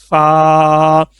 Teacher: اور یہ جو فا ہے یہ آپ نے جو اوپر والے جو دانت ہیں، ٹھیک ہے، ان کا جو کنارہ ہے وہ نیچے والے ہونٹوں کا جو تر حصہ ہے اس کے ساتھ لگانا ہے. ٹھیک ہے، تب یہ لفظ ادا ہوگا فا.